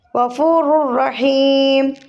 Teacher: تنوین کے بعد را ہے تو میں نے بتایا لام اور را جو ہیں بلا گناہ پڑھے جاتے ہیں، اور یا میم واو اور نون جو ہے وہ گناہ کے ساتھ. تو یہاں پہ ادغام بلا گناہ ہو رہا ہے. غفور الرحیم.